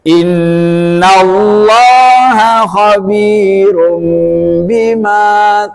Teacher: tanwin bertemu ba itu disebut iqlab